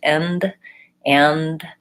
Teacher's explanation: you should be able to just go to the N, alveolar ridge, and then close off the air to make the D. In this case, sometimes we make a stop to D, so I'll say and. · my tongue doesn't touch my teeth for either the N or the D sound. It's always back behind my teeth.